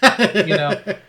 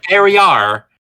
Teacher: There are certain words that end in a vowel that in certain British accents they just add a random R on. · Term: redistributing R's